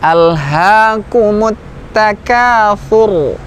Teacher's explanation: Ra-nya tebal, diangkat pangkal lidahnya.